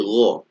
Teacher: posisi sudah isti'ala menjadi gha. Menjadi bukan ga ya, tapi gha. Ngalir dan menebal. Ma naik ke atas karena dia isti'ala kemudian dialirkan.